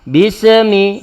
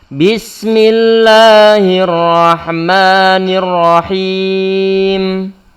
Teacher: Enggak boleh bismi, enggak boleh karena huruf sin bukan termasuk huruf qalqalah. Kita berikan sifat rakhawah ataupun mengalirkan suara sin tersebut. · huruf sinnya jangan sampai dikolkolahkan